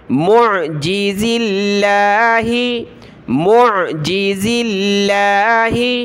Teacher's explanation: لفظ اللہ سے پہلے زا پر زیر ہے تو ہم نے لفظ اللہ کو یہاں باریک پڑھنا ہے